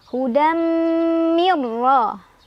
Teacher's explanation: nun sukunnya dileburkan atau dimasukkan ke ro tanpa dengungan. Jadi cukup ditekan. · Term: idgham bila gunnah